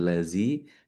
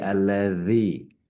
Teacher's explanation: ujung lidah itu ketemu sama gigi seri atas